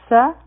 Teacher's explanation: سین کی سیٹی والا آواز دی